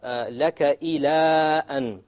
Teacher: Now I read it very long, and you notice because there's a hamza after it. So this is a rule we haven't done before, because there's a hamza after the harf med.